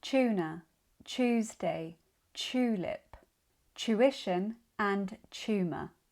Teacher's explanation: when T is followed by the U sound like you find in you it becomes chew. Like in tuna Tuesday, tulip tuition and tumor.